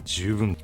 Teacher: it's actually nakadaka which means Center High right so it's low high high low